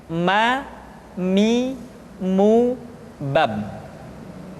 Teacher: huruf ma diucapkan dengan cara merapatkan dua bibir.